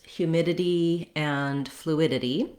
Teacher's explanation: so the suffix -dity has two flap sounds